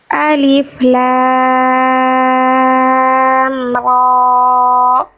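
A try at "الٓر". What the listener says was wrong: Nah, rohnya panjangnya jangan sama kayak lam. Pembuka surat di beberapa surah dia ada huruf-huruf muqatta'ah namanya. Jadi huruf-huruf yang dibaca sesuai dengan nama aslinya. Ya, nggak dibaca ala ro. Tinggal praktek di huruf ro-nya.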